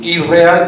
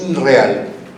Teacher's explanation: la N con la R deviene en doble R